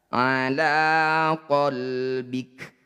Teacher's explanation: terakhir itu harus di sukunkan ala qolbika ketika dihentikan ala qbik huruf Kaf ketika disukun ini punya sifat namanya Hamas jadi harus mengeluarkan percikan udara dari lisan kita